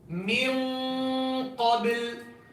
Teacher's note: But qaf and kaf, the only 2 letters among the 15 ikhfa letters in which the makhraj is completely blocked, means no oral sound at all. It's only pure ghunna.